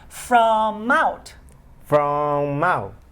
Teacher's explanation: Put the M in front of the O.